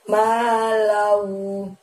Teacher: Ma panjangnya 2. Lau itu kita tahan sebanyak 2 ketukan.